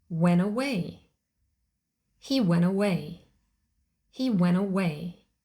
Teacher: sometimes the t is also dropped when the first word ends in the spelling n and the next word starts with a vowel sound